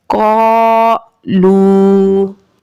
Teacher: अलिफ मद्दा को एक अलिफ की मिकदार के बराबर खींच के पढ़ेंगे और वाव मद्दा को एक अलिफ की मिकदार के बराबर खींच के पढ़ेंगे